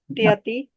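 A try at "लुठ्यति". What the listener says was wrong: Luthyati. That is thakar. I think it should be luthyati. Thakara should be there.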